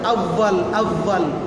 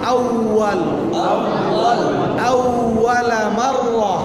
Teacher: উপরের দাঁত দিয়া নিচের ঠোঁট দিয়া ফা, ওখান থেকে ওয়াও বললে হবে না